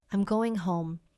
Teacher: Voice goes down. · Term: Statement